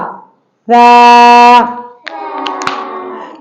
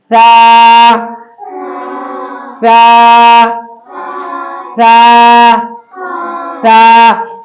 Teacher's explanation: सा, बिल्कुल सॉफ्ट अदा होता है। इसको अदा करते वक्त सीटी की आवाज नहीं आना चाहिए। सा सा सा सा, नीचे का दांत नीचे रहने दो, उसका कोई दखल नहीं है, सिर्फ जबान पर ध्यान देना है, सिरे पर और जबान का और ऊपर के दांतों की जड़ किनारे पर।